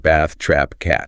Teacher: pronounced with a short, flat a sound. It's the exact vowel you hear in the word cat or trap. Your mouth spreads wide and the tongue is relatively flat.